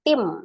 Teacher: merubah bunyi nun sukun menjadi mim sukun ya harusnya Tin menjadi tim nah gitu ya jadi Nun sukunnya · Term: iqlab